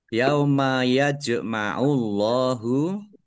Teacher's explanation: Allahnya dibaca tebal karena harakat di depannya domah · jim sukun, bacaan qalqalah, dibaca memantul, ditampakkan pantulannya. Kemudian Allahnya dibaca tebal karena harokat di depannya domah.